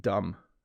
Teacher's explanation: You don't say the B sound, dumb. Okay, maybe you don't say the B at all, dumb. Yeah, don't say the B there.